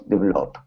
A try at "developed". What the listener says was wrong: Okay, try that last word. Give me a T sound at the very end. Developed.